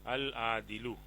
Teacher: عین جو ہے وہ قمری لفظ ہے اسی لیے لام پڑھا جا رہا ہے